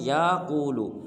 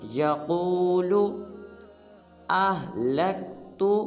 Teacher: یا کو لمبا نہیں کریں گے بلکہ قاف کو پر ادا کریں گے